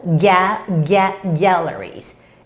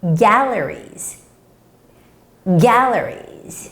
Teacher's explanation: the stress comes on the first syllable, galleries.